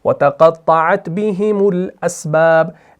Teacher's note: بِهِمُ میم کو لام سے ملایا